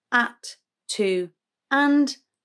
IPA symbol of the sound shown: ə